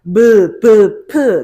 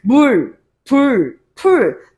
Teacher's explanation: 입술이 맞닿았다가 떨어지면서 나는 소리죠. 물, 불, 풀, 무, 브, 프 모두 똑같습니다.